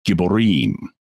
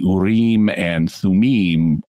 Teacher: urem and thumim both have that eem sound on the end